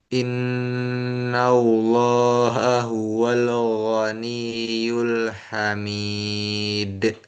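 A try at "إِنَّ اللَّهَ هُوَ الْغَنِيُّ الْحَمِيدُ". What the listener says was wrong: Lam pertama masih mantul. Huwal go.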